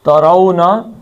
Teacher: ترونا را کو موٹا پڑھنا ہے, لا کو موٹا نہیں پڑھنا